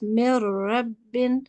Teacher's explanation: So we completely cut out, so to say, the noon. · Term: assimilation